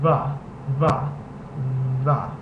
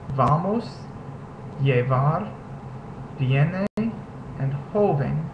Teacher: But it makes a B sound whenever it's at the beginning of the word, or it can be pronounced with the lips coming together as if you're going to say B, but not closing them entirely.